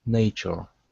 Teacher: let's switch this T to a CH sound.